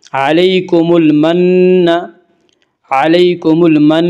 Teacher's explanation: نون مشدد غنہ ہوگا، غنہ کی مقدار 1 الف ہے